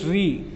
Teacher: वे व्यंजन जिनके उच्चारण में जिह्वा को 2-3 बार कंपन करना पड़ता है प्रकंपित व्यंजन कहलाते हैं। इसे लुंठित वर्ण भी कहा जाता है।